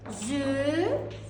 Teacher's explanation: Zülmkar sözündə vurğu kar hecasına düşür.